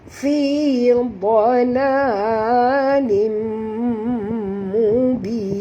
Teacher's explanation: Tanwin baris dua di bawah bertemu dengan mim, kita kena masuk 100% dan dengung. Idgham ma'al gunah.